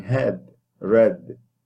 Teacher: it is a mid front unrounded lax vowel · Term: epsilon